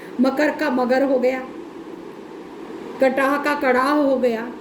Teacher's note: अघोष ध्वनियाँ घोष ध्वनियों में बदलती है तो घोषीकरण कहलाता है